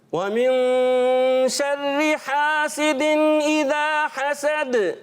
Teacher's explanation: اذا ایک الف کھینچیں گے اس کو، ٹھیک ہے؟ حسد، اور پھر آخر میں دال پر کیا کریں گے؟ قلقلہ کریں گے